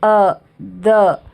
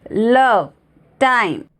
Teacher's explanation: तो जो सॉफ्ट है उसका साइन ऐसा है यू, और स्ट्रॉन्ग सिलेबल का साइन है यहाँ पे देख लिए स्लैश, ओके, उसे हम बोलते हैं हैवी और यू can say stressed sound. तो जो सॉफ्ट सिलेबल है, मतलब जो क्विक साउंड है, लाइट साउंड है, वो है द, और जो बहुत हैवी है, स्ट्रेस्ड है, लव, टाइम